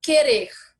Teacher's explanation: Quando eu falo querer, eu não pronuncio o U.